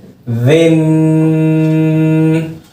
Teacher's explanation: نرمی سے فا والی جگہ سے ہی، سختی نہ ہو، زا کی آواز نہ آئے تال کے اندر.